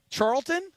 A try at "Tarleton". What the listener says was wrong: It's with a T, not with a CH.